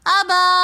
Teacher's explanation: الف مدہ ہونے کی وجہ سے ہم نے ابا ایک الف کی مقدار کھینچ کر پڑھا